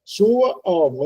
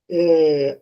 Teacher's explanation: Então, é um encontro vocálico ascendente, sua alma. Então, o A que veio antes é o mais fraco do que o da alma, né? Sua alma. Esse A do sua, ele está precedendo um som, um A forte da alma.